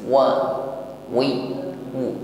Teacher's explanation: makhrajnya syafatan, bibir atas bawah dihimpun ke depan, mencucu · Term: huruf waw